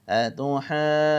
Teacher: یہ ہا کے اوپر مد آ گئی, جیم کے اوپر مد آ گئی ہے, لہذا مد کو ہم نے 5 الف کے برابر لمبا کرنا ہے